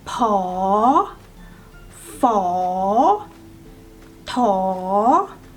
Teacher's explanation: All these three are high class consonant, and the sound is in rising tone.